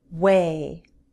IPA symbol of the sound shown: w